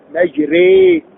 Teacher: ما معنى الإمالة؟ جعل الحرف بين، فلا هو مفتوح بفتح محض ولا هو مكسور بكسر محض